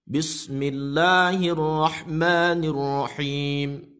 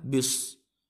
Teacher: Ketika pengucapan huruf ba, khususnya pada awal ayat ini, Bismillah, ada agak dikencangkan, bis, bukan bis. Kalau kita tidak mengencangkan pada bibir kita, maka yang keluar pada huruf selanjutnya bukan sin, tapi adalah shad. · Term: contoh salah